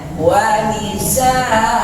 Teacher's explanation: Karena ada tanwin lalu kita berhenti, ada alif, nggak ada alif, bacakan panjang 2 harokat. Namanya mad iwad begitu.